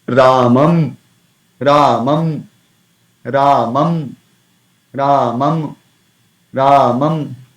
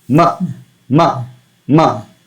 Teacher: But while pronouncing this anuswara, our lips position do not become the same as pronouncing ma. While pronouncing ma, our lips move inward.